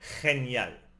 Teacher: G before E or I is a scraping sound in the throat, like the J in jalapeno.